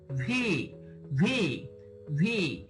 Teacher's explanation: ভি এর উচ্চারণ হবে ভি, উপরের দাঁত ও নিচের ঠোঁট